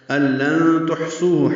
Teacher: لام اخفا ہوگا، نون کے بعد تا آنے کی وجہ سے، نون ساکن کے بعد تا آنے کی وجہ سے اخفا ہوا ہے